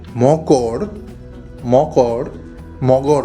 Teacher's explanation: ক টা গ হয়ে গেল আমরা প্রত্যেকে জানি ক কিন্তু একটা অঘোষ ধ্বনি। তাহলেই অঘোষ ধ্বনি ঘোষ ধ্বনিতে পরিণত হচ্ছে। অর্থাৎ গ এ পরিণত হচ্ছে। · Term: ঘোষী ভবন